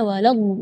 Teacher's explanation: Mad di situ kita harus panjang membacanya 6 harakat karena di situ hukumnya mad lazim kalimi mutsaqqal, jadi membacanya waladhdallin harakat 6 harakat.